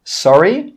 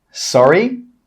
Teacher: your intonation should go up, sorry. If you say sorry and your intonation goes down, the other person may not know that you want them to repeat themselves.